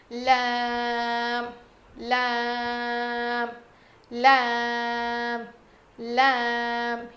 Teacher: زبان کے کنارے کو اوپر کے داڑوں میں لگائیں گے